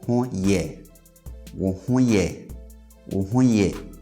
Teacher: so you just raise the last syllable in tone and you have a question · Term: statement questions